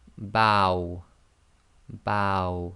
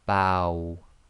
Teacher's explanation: Bow. So you say ba and then try to effectively say the wow. So you end up with a round lips making a small round circle.